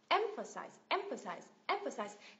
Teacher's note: người ta nhấn vào âm tiết thứ nhất âm e f · nó thành s này emp emp emphasize emphasize nhắc lại nhá âm thứ nhất được Nhấn này âm thứ ba cũng được Nhấn nhưng mà nhấn nhẹ hơn này và âm thứ hai không được Nhấn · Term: secondary stress